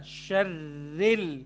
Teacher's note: बिल्कुल रॉ के नीचे जेर है तो हम रॉ को मोटा नहीं पढ़ सकते